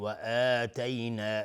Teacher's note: و آتینا مد بدل هست، اینجا به مقدار دو حرکت کشیده میشه